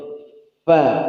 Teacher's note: ujung gigi atas bertemu dengan bibir bagian bawah perutnya. Fa, atrafus sanayal ulya ma'a batanis syafatis sufla.